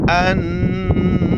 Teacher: اخفا کرنا ہے، ناک میں آواز چھپانے